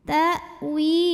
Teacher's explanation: Hamzahnya syiddah, tertahan suaranya ya